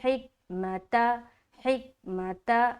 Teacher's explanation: تو یہاں پر ہم پڑھیں گے حکمت، ہا کو نکالیں گے اچھے سے، حکمت، حکمت، ہے نا، حلق کا وسط حلق سے نکالیں گے، درمیانی حصہ اس کا مخرج ہے۔